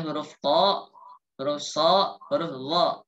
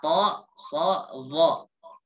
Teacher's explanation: Yang menjadi ciri khas huruf tebal itu lidah belakang. Pangkal lidah itu naik.